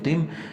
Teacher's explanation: ताद ज़ेर मीम तिम, यहाँ मीम के ऊपर शद है, मीम मुशद्दद है और यहाँ पर गुन्ना होगा